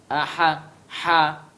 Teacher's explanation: tempat keluarnya adalah tengah tenggorokan kita, aha, ha, tarik ini ke bawah, tarik dagu kita, ha, dan jangan keluarnya di hidung, ha, ya, harus ha, jangan ha.